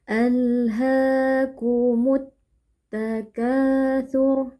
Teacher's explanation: Jadi al-nya di sini tidak dibaca tapi langsung masuk atau idgham ke dalam huruf ta. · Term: alif lam syamsiyah